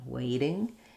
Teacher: They're not saying a strong D. But it's easier for them to think of it as a light D